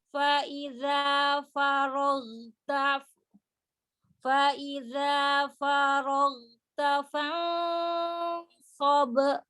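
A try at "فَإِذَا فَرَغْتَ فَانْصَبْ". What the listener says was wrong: Jaharnya tampakkan. Ghain ya, dia ada jahar. Faiza farogta fansab.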